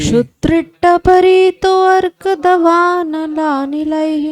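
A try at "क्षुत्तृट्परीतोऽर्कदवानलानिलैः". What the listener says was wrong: तो पूरा नहीं बोला जाएगा, हलंत है। शुत्रुट्परीतो अर्क दवानलानिलैः।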